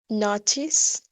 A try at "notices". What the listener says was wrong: Notices. You said like notice. It's like one.